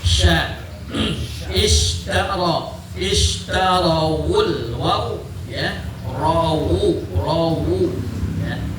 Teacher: sifat ini tafkhim karena ro-nya berharkat fathah ya